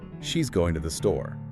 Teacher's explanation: With a falling intonation at the end, it's a straightforward statement. But if you add a rising intonation, it becomes a question.